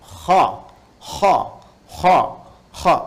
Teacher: itu bagian pangkal lidah di paling ujung itu menyentuh ke langit-langit. Sehingga ketika dia ke atas, suaranya lebih tebal.